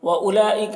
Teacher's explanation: یہ بیچ میں جو واو ہے اس واو کو نہیں پڑھا جا رہا ہے